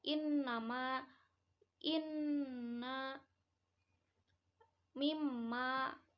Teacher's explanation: ada Nun dan mim bertasd itu disebutnya gunah dalam hal ini hukumnya wajib ditampakkan gunahnya atau dengungnya Adapun lama dengungnya tuh kira-kira satu Alif atau dua harakat